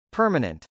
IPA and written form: pˈɝmən.ɛnt (permanent)